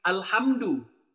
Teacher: Mim mati bertemu dal, itu idhar. Jelas tidak ada yang didengungkan. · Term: idhar syafawi